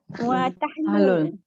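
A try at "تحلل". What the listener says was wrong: Tahallul. Daripada tahallala yatahallalu tahallul. Tafa'ala yatafa'alu tafa'ul. Tapi bila kita sebut style Melayunya tahlul. Tahlul kan? Kita belajar Arab ni tahallul. Tahallala yatahallalu tahallul. Wa tahallul.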